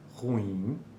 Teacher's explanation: A palavra ruim pode ocorrer opcionalmente como ruim, como uma sequência de vogais para muitos falantes